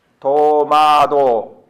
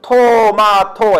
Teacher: 하면 손으로 한번 여기다 대보세요 도마도 이번에는 토마토 해보세요 차이 느껴지시죠 한국말은 도마도에는 바람이 별로 안 나오지만 토마토 하면 팍팍 나갑니다